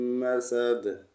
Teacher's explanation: وقف میں دال کو ساکن پڑھیں گے تو کلکلا کریں گے